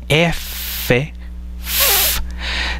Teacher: serían los dientes superiores, el articulador pasivo, mientras que el que tiene mayor movimiento es el labio inferior